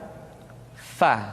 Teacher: diucapkan dengan menyentuhkan ujung dua gigi seri kita bagian atas dengan bibir bawah bagian dalam